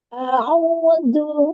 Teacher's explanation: Rasakan A'udzu pita suaranya bergetar